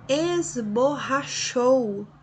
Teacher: é um ditongo oral, mas é decrescente. Vai da vogal, que é o O, para a semivogal, U. Decrescente.